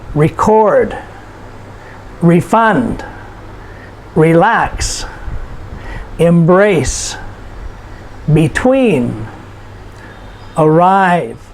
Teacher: shows action and so here are six simple two-syllable verbs and you will notice the emphasis or the stress is put on the last syllable